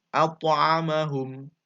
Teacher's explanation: setelah qalqalah, huruf to, itu langsung membaca huruf ain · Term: qalqalah sugro